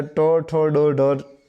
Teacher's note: તમારી જે જીભ છે એ તાળવાથી થોડા આગળના ભાગે અડે છે, એટલે કે ટ, ઠ, ડ, ઢ તરીકે ઓળખાય છે, મૂર્ધન્ય તરીકે ઓળખાય છે.